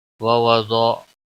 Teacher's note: ضاد کے اوپر زبر ہے، ضاد حروف مستعلیہ میں سے ہے اس لیے موٹا پڑا جائے گا